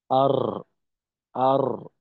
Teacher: জিহ্বার আগা তালুর সঙ্গে বারবার স্পর্শ হয়, তো সেক্ষেত্রে বাতাস বের হওয়ার সম্ভাবনা বেশি, অন্যথায় কম।